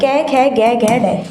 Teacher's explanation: ये पांचों के पांचों जो वर्ण है ये कै वर्ग में आएंगे, और ये कंठ में।